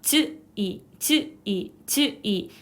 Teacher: 즈이 발음할 때는 즈를 발음한 후에 그냥 밑으로 뚝 떨어뜨리기만 하면 이 소리를 낼 수 있습니다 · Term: 구개음화